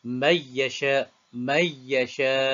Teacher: nun mati bertemu dengan ya. Nun mati bertemu dengan ya. Dipanggil idgham ma'al gunnah bagi semua qura' kecuali khalaf sahaja dia baca idgham bila gunnah.